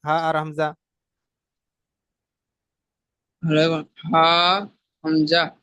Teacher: হালাকের কন্ঠনলীর শুরুতে হা আর হামজা উচ্চারিত হয়